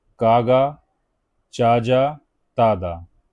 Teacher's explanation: क च ज त द ये अल्पप्राण में आते हैं।